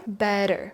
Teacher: Again, those T's soften into two D's.